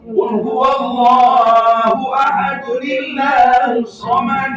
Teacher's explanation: Mestinya bunyi tanwin dun, nunnya sukun, tapi nunnya dikuatkan kembali. Dihidupkan kembali. Jadi nil bunyinya. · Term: nunul wiqayah